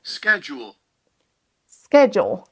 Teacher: Là, vous entendez un son sk. SK au démarrage.